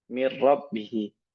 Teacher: Dia ditakrirkan, digetarkan rohnya, bukan digunnahkan. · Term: idgham bila gunnah